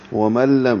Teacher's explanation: نون ساکن کے بعد لام ہے، ادغام ہو جائے گا، میم لام سے مل جائے گا. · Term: ادغام کامل